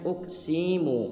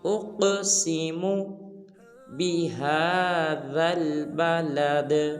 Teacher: جب حمزہ کو قاف ساکن کے ساتھ ملائیں گے تو قاف کو قلقلہ کریں گے یعنی کہ ہلائیں گے اور سین کو لمبا نہیں کریں گے